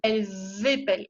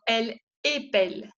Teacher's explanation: para hacer la diferencia entre el singular y el plural, se pronuncia la S como una Z. Je dis elles épellent, hago la unión, elles épellent.